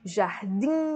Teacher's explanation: Última sílaba tônica, oxítona.